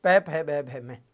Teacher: आपके दोनों होठ टच हो रहे हैं, बिना दोनों होठों को टच किए आप इनको नहीं बोल पाओगे। इसका मतलब इसका उच्चारण स्थान आपके पै वाली लाइन का ओष्ठ होगा, ये उच्चारण स्थान बिंदु आएगा अपने वर्ण में।